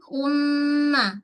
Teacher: wajibal ghunnah dengung dua harakat